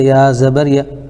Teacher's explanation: یا کے اوپر زبر ہے، زبر کو جلدی پڑھیں، تھوڑا بھی نہ کھینچیں، زبر کی آواز اوپر اٹھتی ہے